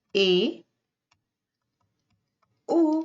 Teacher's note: जब हम ओ बोलते हैं तो हमारा मुंह आधा बंद रहता है। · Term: अर्ध समृत स्वर